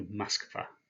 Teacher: because the second syllable is one that's stressed, that first O is pronounced as an A. So Moskva. More about stresses later on.